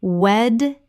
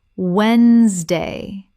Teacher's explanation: The middle syllable is completely silent in natural speech.